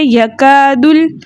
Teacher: वाला हर्फ हमेशा मुतहर पढ़ा जाता है हम पढ़ेंगे य कादल काफ को हमने बारीक रख ना है · अलिफ मद्दा को मुंह खोल के अदा करना है और दाल को हमने लाम के साथ मिलाकर पढ़ना है · काफ को हमने बारीक रखना है, ठीक है। अलिफ मद्दा को मुंह खोल के अदा करना है